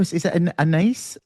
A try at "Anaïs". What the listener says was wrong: It's Anaïs. You pronounce all the letters, Anaïs.